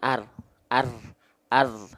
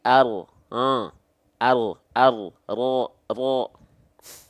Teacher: ujung lidahnya nggak naik, nggak nempel, tapi yang nempel adalah bagian punggung lidah. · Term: huruf ro